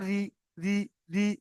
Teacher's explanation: যদি জের হয় তাহলে রটা বারিক মানে মুখটা লম্বা করে পড়তে হবে।